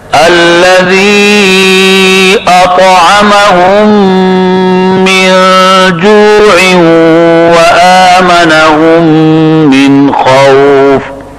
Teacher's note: الذی میں مد منفصل ہے, 4 الف کے برابر, اس میں توسط ہوتا ہے. اطعم میں طا میں قلقلہ ہے اور طا مطبقہ اور مستعلیہ بھی ہے, موٹا پڑھا جائے گا.